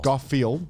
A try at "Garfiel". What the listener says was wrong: No D.